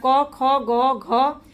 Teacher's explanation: तो जो क वर्ग है उसका उच्चारण हम कंठ से करते हैं। जहां क, ख, ग, घ बोल करके देखिए तो आपके गले से आवाज आएगी। जिसको कंठ बोलते हैं।